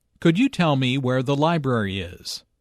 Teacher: Notice that library is stressed here because it is the word with the important information.